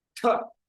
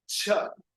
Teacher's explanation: Ta, sudden release. Cha, the air is released slowly.